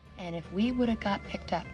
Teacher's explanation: have usually reduces to a v sound, would've, or a schwa and a v sound, of, would've, or it's reduced to just a schwa sound, woulda. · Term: reduction of the word have